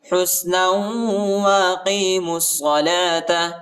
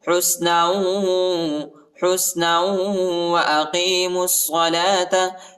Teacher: نون کو واو کے ساتھ ملائیں گے اور غنہ بھی کریں گے. حسنا واقیموا الصلاة میم کو صاد کے ساتھ ملائیں گے، واو اور یہ دونوں الف اور لام نہیں پڑھا جاتا، ان حرفوں کے اوپر حرکت نہیں ہے.